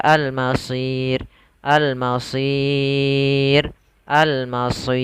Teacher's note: Pada lafal masir sama seperti tadi, di sini ada mad arid disukun, yaitu panjangnya boleh 2 harokat, 4 harokat atau 6 harokat. Maka kita boleh baca al-masir, al-masir, al-masir.